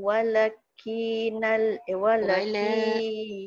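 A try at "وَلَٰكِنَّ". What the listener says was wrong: Uh, la dia ada panjang sikit. Walakinna aktsarahum la ya'lamun.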